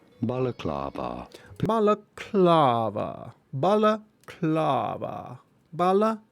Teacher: You do want to stress on the third syllable, on the kla syllable.